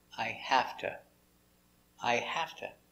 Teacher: pronounce it like that let's talk about the pronunciation first two the connector two is never stressed so we pronounce it i have to i have to the · The connector to is never stressed, so we pronounce it t.